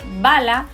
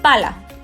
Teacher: estos son fonemas ambos oclusivos bilabiales